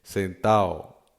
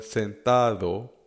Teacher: the syllable at the end that's preempted by the D is non-existent. So instead of sentado, it's sentao.